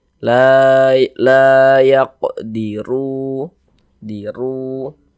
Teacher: maka huruf r-nya dibaca takhim baca tebal sehingga pangkalisan kita naik terangkat ke atas ketika Kita mengucapkannya tebalkan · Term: tabkhim